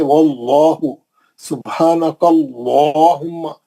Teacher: आवाज को मोटा करके मुंह भर के तफखीम से पढ़ेंगे